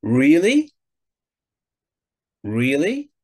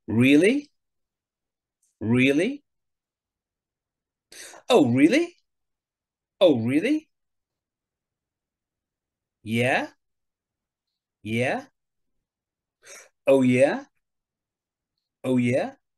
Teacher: so generally we use a rising intonation so your intonation goes up at the end of what you're saying